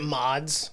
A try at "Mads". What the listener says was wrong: No D. You don't say D. No, you don't pronounce it.